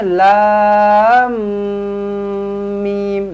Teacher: dia ada dengung dekat tengah-tengah nak masuk antara lam nak masuk ke dalam mim tu dia ada dengung dua harakatlah jadi lam ni enam harakat dengung tu dua harakat campur lagi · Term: dengung 2 harakat